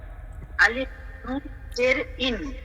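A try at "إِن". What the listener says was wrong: হামজা নুন জের, আলিফ না, হামজা নুন জের ইন।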